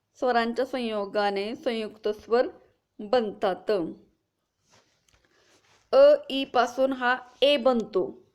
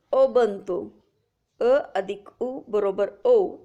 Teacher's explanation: दोन भिन्न स्वरांच्या संयोगाने संयुक्त स्वर बनतात. अ ई पासून हा ए बनतो.